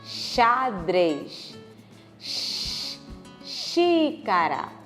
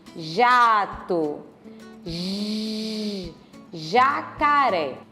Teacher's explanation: X, J, mesma coisa, o mesmo modo de articulação, o mesmo ponto de articulação. A diferença é que uma é surda, não sai a voz, e a outra é sonora, sai a voz.